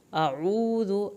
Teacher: اعوذ الف اور عین کو علیحدہ پڑھیں، واو ساکن کو کھینچیں، ذال کی پیش کو لمبا نہیں کرنا